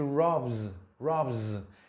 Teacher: entonces esa s se va a pronunciar como zeta por la influencia del sonido ese que tiene voz